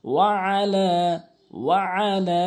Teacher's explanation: এখানে তিন আলিফ টানবেন এবং আইনটি চাপ দিয়ে উচ্চারণ করবেন